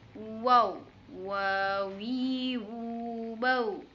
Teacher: Huruf waw yang sama dengan huruf mim, yaitu dengan menyentuhkan kedua bibir kita